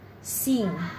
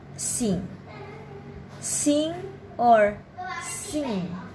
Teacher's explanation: the letter G is never pronounced in the NG combination at the end of words